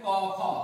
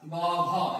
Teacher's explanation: ক, খ এটা উচ্চারণের সময় স্বরতন্ত্রী কাঁপে না বলে এগুলোকে কি বলা হয়? এগুলোকে বলা হয় অঘোষ। আর গ, ঘ এগুলো উচ্চারণের সময় স্বরতন্ত্রী হচ্ছে কি অনুরণিত হয় বা কেঁপে ওঠে বলে এগুলোকে বলা হয় ঘোষ।